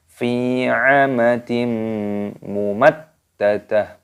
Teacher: Kasrotan wen bertemu dengan huruf mim, hukumnya dibaca idgham bi gunnah, dimasukkan dan disertai berdengung.